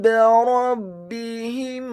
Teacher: Huruf ra-nya dibaca tafkhim, tebal, fathah 1 harokat. Huruf ba-nya dibaca tipis, tarqiq, ditasydidkan, ditekankan, kasrah 1 harokat.